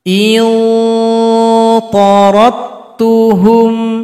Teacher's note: qalqalah enggak ada lagi karena telah gabung kepada huruf ta.